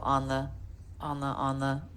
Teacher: function words said quickly flat lower in pitch and volume